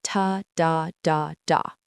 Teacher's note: Each syllable gets roughly equal weight and duration. It doesn't matter if it's a long complex syllable or a short simple one.